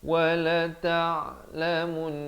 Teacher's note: Jangan berhenti dengan wala ta'lamun, tak betul. Sebab nun itu dia ada sabdu, dia kena dengung dua harakat berhenti.